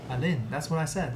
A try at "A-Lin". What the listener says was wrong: It's weird emphasis. with English, it'd be like saying Jennifer.